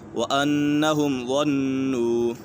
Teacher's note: وَأَنَّهُمْ ظَنُّوا، یہاں پر اظہار شفوی یا میم ساکن کے بعد حرف با اور میم کے علاوہ کوئی بھی حرف آ جائے تو میم ساکن میں اظہار شفوی ہوگا، یعنی غنہ نہیں کریں گے۔ ظَنُّوا، یہاں پر نون مشدد ہے، نون مشدد میں ہمیشہ غنہ ہوتا ہے۔